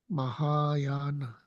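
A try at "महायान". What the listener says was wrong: Very good. Mahayana.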